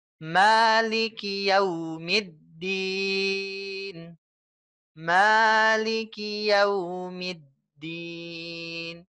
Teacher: biasanya ada yang panjang nih ada kepanjangan ingat Hanya dua harokat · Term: mad asli